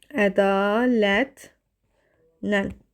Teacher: Burda bir tələffüzdə N samiti artırıldı.